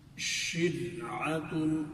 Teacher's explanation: را ساکن ہے لیکن اس سے پہلے والے حرف کے نیچے زیر ہے، جیسے شرعتن، تو اس صورت میں بھی را کو باریک کر کے پڑھیں گے